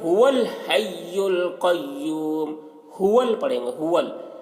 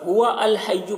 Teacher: اور اس کو ملا کر بھی پڑھ سکتے ہیں. جب ملا کر پڑھیں گے تو واو کو لام سے ملا کر پڑھیں گے اور یہ حمزہ جو ہے یہ گر جائے گا, اس کو نہیں پڑھیں گے.